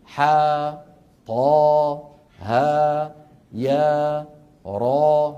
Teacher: ويمد بمقدار حركتين مدا طبيعيا